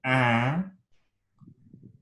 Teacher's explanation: If I say un, it's close to this unmodified epsilon letter here, but my velum inside my mouth is lowered and there's air flowing through the nose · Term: nasalization